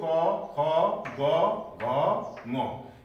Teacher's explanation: जुन अक्षरहरू उच्चारण गर्दा घाँटीमा बढी बल पर्छ, घाँटीमा श्वासको झोक्का बढी आउँछ, त्यस्तो अक्षरहरूलाई हामीले कण्ठ भनेर भन्छौँ